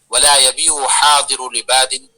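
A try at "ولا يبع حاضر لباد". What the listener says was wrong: کا صیغہ ہے، آخر میں سکون دے کر پڑھیے، ولا يبيع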